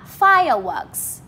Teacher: Fire thì các bạn lên giọng và works thì các bạn xuống giọng. Như là từ fire này chúng mình thêm dấu sắc, còn works thì chúng mình thêm dấu huyền ấy. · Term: trọng âm 1